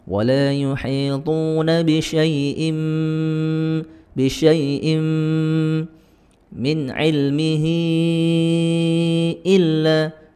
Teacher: di sini ada tanwin bertemu dengan mim, idgham bi gunnah, dimasukkan dan disertai dengan dengung